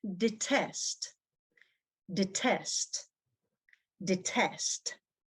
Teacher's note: Detest is a verb in which stress is on the second syllable. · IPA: /dɪˈtest/